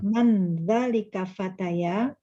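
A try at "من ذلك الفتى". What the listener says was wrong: Ayo, man dzalikal fata, ini ya-nya harusnya tidak pakai titik ya. Ini salah. Man dzalikal fata gitu ya.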